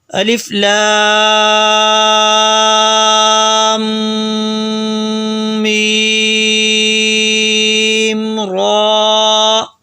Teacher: الف لام را، اور را کو موٹا کر کے پڑھیں گے، الف لام میم را۔ میں نے لام اور میم کے درمیان میں ناک میں تھوڑی دیر آواز کو چھپایا یعنی غنہ کیا، کیونکہ میم کے اوپر شد ہے اس وجہ سے میم اور لام کے درمیان میں غنہ ہوگا۔